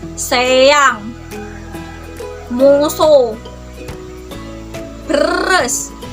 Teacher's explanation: S termasuk ke lamino alveolar menangka beda neng daun lidah sareng gusi